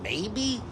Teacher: spoken with a furrowed brow and a rising tone uncertainty confusion